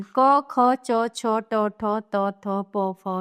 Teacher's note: जिस वर्ण के उच्चारण में स्वर यंत्रिका में कंपन नहीं होता है उसे अघोष वर्ण कहते हैं।